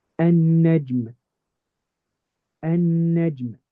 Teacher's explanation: Notice I completely skipped over this lam. I went straight from the alif to the nun. Over here, the alif is not the beginning of the word.